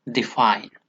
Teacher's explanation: the first syllable is unstressed and the second syllable is stressed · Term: iamb